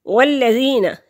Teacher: والذین، لام مشدد ہے، 2 دفعہ پڑھا جائے گا، پیچھے بھی خود بھی۔ یا ساکن سے پہلے لفظ کے نیچے زیر ہے تو یہ یا مدہ ہے، ایک حرکت کے برابر اس کو لمبا کریں گے